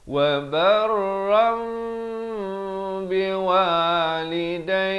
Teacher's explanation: Tapi bila datang ba jadi hukum iqlab, ditukarkan kepada bunyi nun. Ron jadi rom kepada bunyi mim dengan kadar panjang dua harakat.